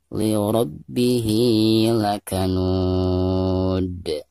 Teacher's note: Jadi ketika diwaqafkan maka dihukumi qalqalah kubro. Dan cara membacanya itu harus dipantulkan dengan suara pantulan yang tebal ya.